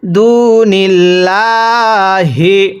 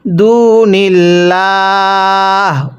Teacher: ওয়াকফ করলে দুনিল্লাহ। ওয়াকফের সময় হায়ের নিচের জেরকে বাদ দিয়ে পড়তে হবে।